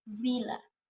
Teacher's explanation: Consonant sounds which are produced by contacting the lower lip and upper teeth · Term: Labiodental sounds